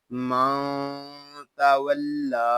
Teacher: लाम को हम एक अलिफ तक खींच कर पढ़ेंगे क्योंकि यहाँ खड़ा ज़बर है, या जायद है, इस या को हम नहीं पढ़ेंगे।